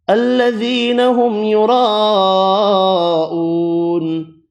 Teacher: بڑی مد 5 الف کی مقدار میں کھینچ کر پڑی